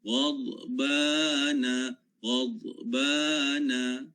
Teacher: dad dia bukan syiddah tetapi dia adalah rakhawah. Sekalipun dia bertanda sukun sakinah tapi kena baca secara rakhawah, bukannya syiddah. · Huruf gha ini kita kena baca secara ghain ya. Sifatnya adalah isti'la. Dad pun sifatnya isti'la.